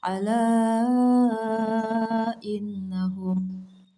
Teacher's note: Apabila ada ketetapan mad tabi'i yang bertemu dengan huruf hamzah atau a dalam kata kalimat yang terpisah, panjang bacanya sebanyak 5 harokat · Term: Mad jaiz munfasil